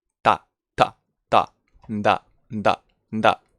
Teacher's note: We can make the sound with the tooth, dental.